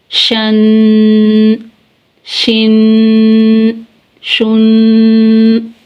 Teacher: شین کو ادا کرتے وقت آواز منہ میں پھیل جاتی ہے ، شین دو زبر شن، شین دو زیر شن، شین دو